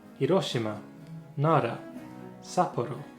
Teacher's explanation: that where in English we have distinct R and L sounds Japanese has a uvular flick like the very start of a Trill that sits in the middle